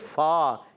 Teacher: اوپر والے دانت اس کے کنارے جب نیچے والے ہونٹ کے تر حصے سے لگتے ہیں تو ادا ہوتا ہے فا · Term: فا کا مخرج